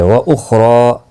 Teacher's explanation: خا مستعلیہ ہے، پر پڑھا جائے گا، را کے اوپر کھڑی زبر ہے، ایک الف کی مقدار کے برابر کھینچ کر پڑھیں گے، اور را پر بھی پڑھا جائے گا۔